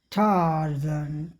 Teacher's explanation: British अंग्रेजी में नन रोटिक लहजा होता है, इसलिए शब्दों के अंत में या व्यंजन से पहले आने वाले आर का उच्चारण नहीं होता है। उसके स्थान पर अक्सर जो वावल होता है, वो वावल जो है लंबा हो जाता है, या स्वा अ की तरफ ध्वनि निकलती है। · टार्जन में आर का उच्चारण नहीं होगा